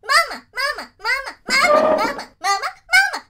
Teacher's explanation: I whack the pitch up really high and she's like a little chipmunk